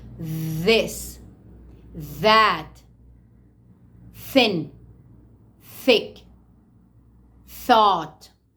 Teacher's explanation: your tongue is placed between the upper row of your teeth and the down one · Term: th sound